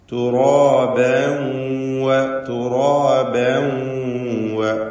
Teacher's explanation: തൻവീനും ശേഷം വാവും ഇദ്ഗാം ബിഗുന്ന നാഖിസ് നൽകി തൻവീനിനെ വാവിൽ ലയിപ്പിച്ച് പഠിക്കണം.